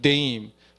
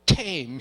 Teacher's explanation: 네임하면 목으로 나는 소리. 네임. 테임은 입으로 나는 소리. 침을 좀 튀겨야 돼. 테임 해가지고 종이를 앞에 놔두면 종이가 흔들리면 이 음이 나는 거예요. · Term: 유성음과 무성음 차이